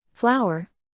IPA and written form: ˈflaʊər (Flour)